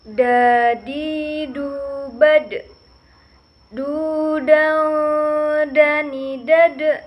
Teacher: Huruf ini keluar dengan cara menyentuhkan ujung lidah ke gusi bagian atas. Nah, dalam keadaan mati, huruf da ini terdengar memantul.